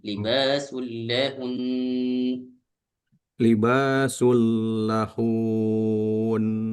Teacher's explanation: lahun ketika diwaqaf harakatnya fathahnya tidak dibaca lagi.